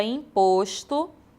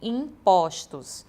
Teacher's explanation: ou seja a vogal tônica fechada passa então a ser aberta no plural